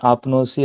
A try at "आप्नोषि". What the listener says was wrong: सी क्यों बोल रहे हो? ओ आ रहा है ना, तो इण से उत्तर तो शकार हो जाता है ना, प्रत्यय के सकार को, आदेश प्रत्यय हो।